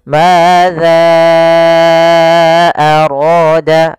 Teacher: Maka kita panjangkan za-nya, hati-hati juga jangan terbaca dengan zai, tapi tetap za, yaitu ujung lidah menempel dengan gigi sari atas. Madza arada, baru dibaca dengan panjangkan za-nya dulu 4 harokat, baru kita baca a-nya.